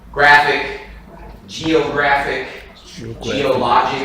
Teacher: stress on the second-to-last so words ending in IC